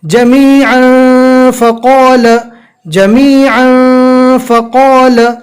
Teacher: اب تنوین کے بعد اکفا کے 15 حروف میں سے فا آ گیا تو یہاں پر تنوین کو ہم ناک میں چھپا دیں گے